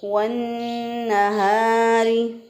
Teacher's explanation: नून मुशद्दद, इसमें अलिफ लाम पढ़ने में नहीं आ रहा, इसका मतलब क्या है कि नून जो है वो हरूफ शमसिया में से है और इसके अंदर लाम का इदगाम हुआ है, यानी इदगाम शमसी हुआ है।